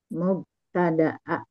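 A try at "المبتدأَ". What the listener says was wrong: Jadi nggak ada alif lam kalau ibu baca ya?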